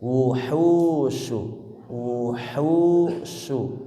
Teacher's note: Wu ya pendek, hu-nya panjang.